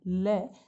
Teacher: तो जब हम ल का उच्चारण करते हैं ल, तो हमारी जीभ जो है वो पीछे की तरफ मुड़ जाती है और हवा जो है वो दोनों तरफ से निकलती है। तो इसलिए हम इसको कहते हैं पार्श्व या पार्श्विक।